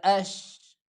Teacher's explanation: آواز کو زیادہ لمبا نہیں کرنا کہ اش ایسے نہیں، بلکہ مختصر سی ان کو ادا کر لیں